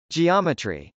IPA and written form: dʒiˈɑmətri (geometry)